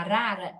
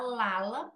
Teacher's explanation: não sabe que o ponto articulatório éa em cima e que ela tem que vibrar a ponta de língua